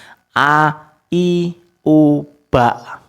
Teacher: hamzah itu makharijul hurufnya dia ada di tenggorokan di pangkal. Dia sama dengan h besar.